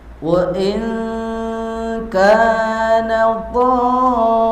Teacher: Cara bacanya kalau mad wajib muttasil itu harus dibaca enam harakat. Tiga alif atau enam harakat.